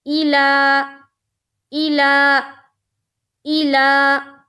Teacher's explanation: ای حمزہ کے نیچے زیر کی حرکت ہے، زیر کو جلدی پڑھیں، تھوڑا بھی نہ کھینچیں، معروف پڑھیں، مجہول آواز سے بچیں، جیسے ای۔ لا، لام کے اوپر کھڑا زبر ہے، کھڑا زبر برابر ہوتا ہے الف مدہ کے، کھڑا زبر کو ایک الف کے برابر کھینچ کر پڑھیں گے